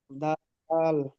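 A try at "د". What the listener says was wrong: এটা এটা আরো দীর্ঘ হবে এই অক্ষরটা এই অক্ষরটা আরো দীর্ঘ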